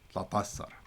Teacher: So there's like a schwa, and half of an E sound between the tau and the ain.